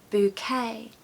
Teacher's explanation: The stress falls on the second syllable, okay? So make sure it has that kind of, goes up like that